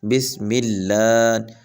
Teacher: ایک تو بسم اللہ یا لفظ اللہ جو ہے، میں نے کل بھی یہی بتایا تھا کہ لفظ اللہ سے پہلے اگر زبر یا پیش ہو تو لفظ اللہ کو موٹا پڑھتے ہیں، اگر لفظ اللہ سے پہلے زیر آ جاتی ہے تو لفظ اللہ کو باریک پڑھا جاتا ہے